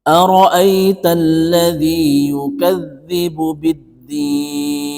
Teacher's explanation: huruf nunnya ini dibaca mati karena wakaf karena berhenti maka panjangnya itu kita boleh membaca antara empat sampai enam ketukan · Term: Mad Arid lisukun